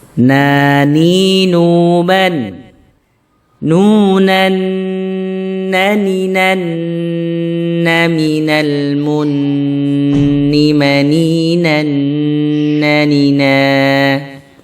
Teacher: ujung lidah kita menyentuh di langit-langit mulut kita ya di bawah makhorijul huruf lam jadi agak ke depan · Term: huruf nun